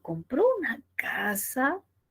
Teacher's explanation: entonces siente esa curvita que sube y nos da este tono ascendente